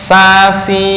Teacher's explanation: Istighfal lidahnya menurun enggak naik ke atas ya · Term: istifal